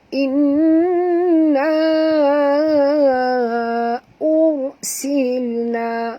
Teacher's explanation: ra ini apabila mati huruf sebelumnya baris depan, maka kena baca tebal, ya, bukan ya, bukan bunyi tapi tebal, ya.